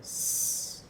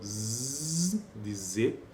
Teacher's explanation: S e Z são duas que fazem parte desse grupo, fricativa alveolar. E aqui ele ainda dá mais uma informação que ela é desvozeada.